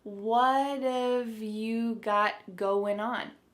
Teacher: That final G in the word going is going to be cut off and we'll just say going. · So, what and have are going to be pushed together.